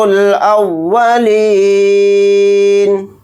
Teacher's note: یہاں پر نون کو ساکن بنا کر پڑھیں گے حالت وقف میں